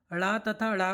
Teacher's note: ड़ तथा ड़ को उत्क्षिप्त व्यंजन कहते हैं